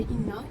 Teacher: Yang pertama saya gariskan pada inna tu adalah gunnah sebab nun dia bertanda tasydid. Jadi cara bacanya adalah dengan dengung dan ditahan selama 3 harakat